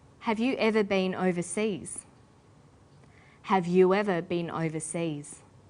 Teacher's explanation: you ends with ooh a high-back vowel